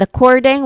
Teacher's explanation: the stress syllable is on the second syllable core. It starts with a schwa sound uh and then core the stress syllable and then ding which is short e sound and then ending with a nasal sound ng or n sound.